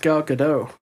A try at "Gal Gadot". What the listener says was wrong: No, she came out in an interview and said that you do pronounce the T at the end of her name.